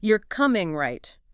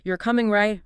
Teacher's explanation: falling sounds more like a statement expecting agreement. The intonation adds that subtle layer of attitude or expectation.